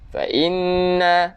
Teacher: nun yang bersabdu kita kena dengung, wajibal gunnah